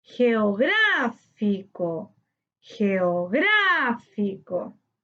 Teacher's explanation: Geográfico tiene su sílaba tónica en gra, correspondiente a la antepenúltima sílaba. Le colocamos tilde porque todas las palabras esdrújulas llevan tilde.